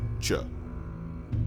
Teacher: By moving the blade of your tongue to the palatal alveolar part of your mouth, just behind the alveolar ridge, you produce Ch.